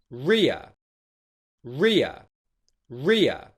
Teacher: the diphthong here is the short I vowel sound followed by the schwa sound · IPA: /rɪə/